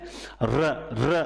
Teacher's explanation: र र जब बोलते हैं कंपन होता है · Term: लुंठित